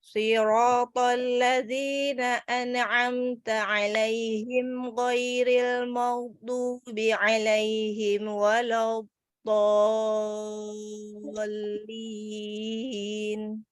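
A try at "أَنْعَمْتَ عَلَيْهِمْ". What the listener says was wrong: Nah, tadi di an'ama, di nun sama mimnya tadi ada qalqalah. Terus di alaihim wa, himwa juga mimnya kayak qalqalah. Wala tipiskan walad.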